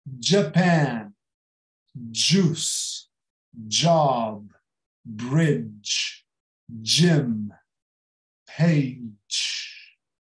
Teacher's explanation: todo o J é como se começasse com um D. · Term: dj